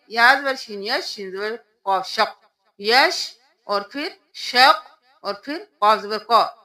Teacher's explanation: شین کے اوپر بھی تشدید ہے، قاف کے اوپر بھی، دونوں کو دو دو بار ادا کریں گے